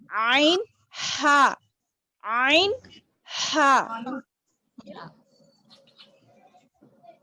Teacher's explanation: درمیانی حلق، وسط حلق جس کو بولتے ہم، عین ہا. تھوڑا اپنے حلق پہ زور ڈالتے ہوئے بولنا ہے اس کو